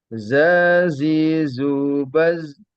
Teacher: ujung lidah diangkat ke atas hampir menempel pada permukaan dua gigi seri di atas dengan demikian antara ujung lidah dengan gusi tersebut ada cela tempat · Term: huruf Za